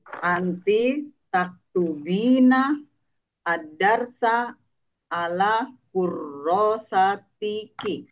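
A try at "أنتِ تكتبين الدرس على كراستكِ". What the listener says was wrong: Iya, bagus.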